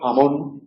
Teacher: aspiración de la J